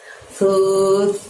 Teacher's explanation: dorong ujung lidah kita hingga menyentuh gigi atas.